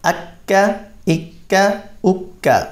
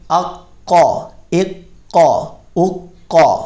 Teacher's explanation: کاف باریک ہے اور قاف پر ہے. اور پہلا کاف جو ہے یہ حروف مستعلیہ میں سے نہیں ہے اور حروف قلقلہ میں سے بھی نہیں ہے.